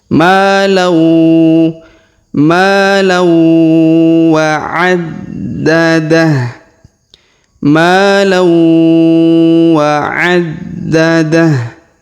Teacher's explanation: huruf tanwin an bertemu dengan waw bertasdid, maka tanwin annya melebur menghilang ke huruf waw ya. Malau.